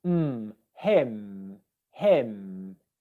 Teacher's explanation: The two lips come together.